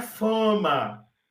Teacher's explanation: o brasileiro transfere a nasalização do m para vogal anterior